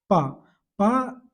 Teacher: हमने बोला तो क्या हुआ मेरे दोनों ओठ मिल गए आप बोल के देखो ना प तो दोनों